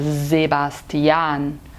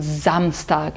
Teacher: o s no começo da palavra tem som de z